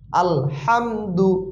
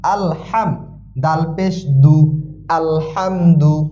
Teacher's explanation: তাই আমরা একটু খেয়াল করে পড়ব। হাম না, আলহামদু গলার ভিতর থেকে চাপ দিয়ে আসবে